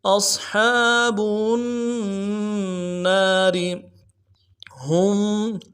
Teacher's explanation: ہا کو میم ساکن کے ساتھ ملانا ہے، میم ساکن پہ غنہ کریں گے